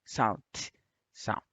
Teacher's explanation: the front and sides of the tongue contact the alveolar ridge anteriorly and laterally.